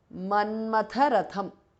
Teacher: Both thas are mahapranah.